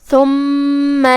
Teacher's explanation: کلمت ثم میں یہاں حرف الثا ہے، تا کی ادائیگی زبان کے سر اور اوپر والے دانتوں کے اندرونی کناروں سے ہے، ثا حروف اللثویہ میں سے ہے تو اس کا دھیان رہے۔ پھر اس کے بعد میم ہے اور اس پہ تشدید ہے، 2 حرف کے برابر ہم میم کو پڑھیں گے